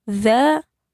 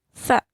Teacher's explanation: za dan sa itu di ujung lidah ya, sama-sama di ujung lidah, tetapi beda sifatnya ya, beda cara keluar hurufnya. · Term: idgham mutaqaribain